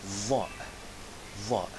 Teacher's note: Va is a strong voiced TH sound, as in the word the, but stronger.